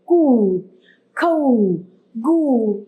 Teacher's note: अब छोटे ऊ की जब मात्रा हम लगाते हैं तो उसको लंबा नहीं खींचते, लेकिन बड़े ऊ की मात्रा को हम लंबा खींचते हैं